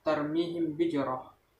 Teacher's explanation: Hukum bacaan disebut ikfa safawi ialah bila mim sukun bertemu dengan ba. Cara membacanya harus disuarakan samar-samar di bibir, didengungkan.